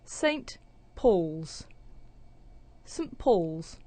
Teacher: instead of saying saint with a strong pronunciation, we're using the weak form, sunt